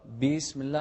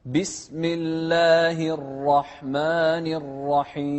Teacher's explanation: لا تطول بكسرة الباء. بسم الله غلط.